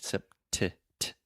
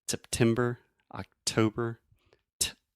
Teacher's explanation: I'm really aspirating, which means I'm breathing air out of my mouth and going t, making that pop sound. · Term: true T